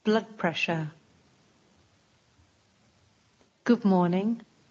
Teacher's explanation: D sounds more like B